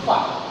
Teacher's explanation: Tapi fa itu keluarnya dari batni syafatis sufla ma'a tarafis thanaya al-ulya. Gigi thanaya yang atas menggigit perut bibir yang bawah.